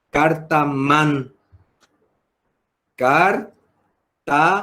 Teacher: En la sílaba man. La sílaba man es la tercera sílaba y en ese caso es la última. Por ende, se carga la voz en la última sílaba. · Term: palabra aguda